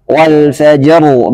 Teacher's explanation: Wal fajru, maka jimnya harus jelas qalqalahnya.